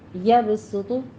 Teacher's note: اور ضاد کو بھی پر پڑھنا ہے، ویبسط میں صاد ہے، یہاں پہ آپ نے سیٹی کی آواز لے کر آنی ہے، سین کی، اس کو موٹا نہیں پڑھنا، باریک پڑھنا ہے